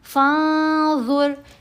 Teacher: اب ہم نے نون کی آواز کو یہاں ناک میں چھپا کر پڑھنا ہے، نون کو ظاہر نہیں ہونے دینا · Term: احفا